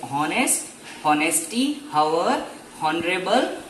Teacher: technically H is silent here with honest, honesty, hour, honorable